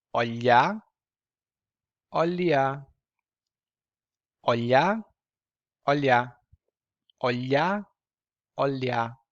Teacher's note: front part your tongue is kind of flat as well and you feel that the sound comes out of your mouth through the sides